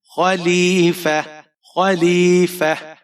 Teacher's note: فا کے اوپر زبر ہے، بغیر کھینچے پڑھیں گے، اور آگے آپ کے پاس یہاں پر تا ہے۔ جب آپ یہاں پر وقف کریں گے تو آپ نے اس تا کو ہا میں بدل دینا ہے۔ خلیفہ، خلیفہ، اگر آپ ملا کر پڑھتے ہیں تب آپ نے تا ہی پڑھنا ہے، تو پھر آپ یہاں پر اخفا کریں گے، خلیفۃ، اس طرح۔